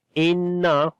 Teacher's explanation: this is noon is coming with shadda sign. We make gunna here, and also we long one alif.